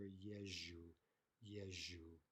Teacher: Often you won't even hear the ze pronounced. You'll simply hear yeju